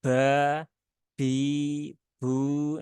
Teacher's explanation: ada hembusan nafas yang keluar dengan kuat Nah itu bukan sifat dari huruf ba ya huruf ba tidak